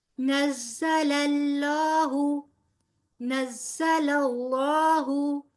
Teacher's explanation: زا جو ہے زا سیٹی کے ساتھ ادا ہوگا، نون کے ساتھ زا کو ملائیں گے اور پھر زا کی زبر کو تیزی سے ادا کرتے ہوئے لام کے مخرج پر آ جائیں گے، ٹھیک ہے.